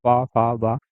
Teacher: ओष्ठ यानी जो होंठों से निकलती है, पूरा पा वर्ग निकलता है